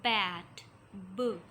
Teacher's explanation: a complete blockage of the air stream is done in the mouth. We completely block the air stream in the mouth. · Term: plosive